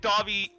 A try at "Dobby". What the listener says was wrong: You didn't even try to like pronounce it in a Japanese way. There, you just said Dobby.